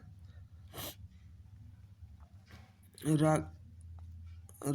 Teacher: लुंठित व्यंजन, जिस व्यंजन का उच्चारण के समय जीभ की नोक वायु से रगड़ खाकर कांपती है उसे लुंठित व्यंजन कहते हैं। इसे लोड़ित व्यंजन, अशक्त व्यंजन भी कहते हैं।